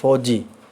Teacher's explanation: ਜਦੋਂ ਅਸੀਂ ਫੌਜੀ ਬੋਲਦੇ ਹਾਂ ਤਾਂ ਫ ਤੋਂ ਬਾਅਦ ਹਲਕੀ ਜਿਹੀ ਹ ਦੀ ਆਵਾਜ਼ ਆਉਂਦੀ ਹੈ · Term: ਘਨੋੜਾ